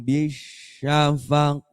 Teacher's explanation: Qaf itu isti'la itu terangkat.